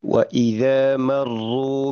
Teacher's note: Sifat dari huruf ro ini adalah sifat dia punya sifat tikror gitu ya. Artinya bergetar. Bergetar secara berulang.